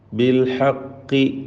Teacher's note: ഖാഫിന് കസ്റാണ്, കുറഞ്ഞ തഫ്ഖീം കൊടുത്താൽ മതി.